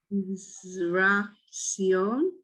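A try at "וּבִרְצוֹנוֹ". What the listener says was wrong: Sa. No, there's no E. Son. Uvratson.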